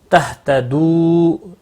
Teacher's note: واو مدہ ہے، ایک الف کے برابر کھینچ کر پڑھیں گے